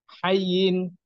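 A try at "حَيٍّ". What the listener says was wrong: Good.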